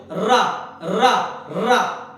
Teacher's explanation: जब रा बोलोगे तो 3-4 बार ऊपर और 3-4 बार नीचे टकराएगी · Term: प्रकंपित या लुंठित